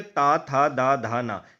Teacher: ता था दा धा ना, यानी कि जो भी वर्ण दांतों को स्पर्श करते हैं, यानी कि हमारी जो जीवा होती है, जो जीभ होती है, वो हमारे दांतों को हल्का सा टच करती है, तब ये वर्ण अच्छे से निकलते हैं, तो इसे दंत व्यंजन कहते हैं, ठीक है।